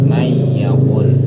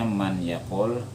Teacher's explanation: May yaqul, aturannya man yaqul, tapi karena ketemu ya jadi may yaqul. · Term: idgham bi gunnah